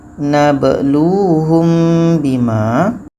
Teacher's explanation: Mim mati bertemu ba. Ikhfa syafawi dengung. · Ba mati di tengah-tengah qalqalah sugra. Lu panjang wau mati.